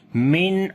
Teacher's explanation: After the noon sakin there is ain, we make izhar halaki, the clear sound of noon.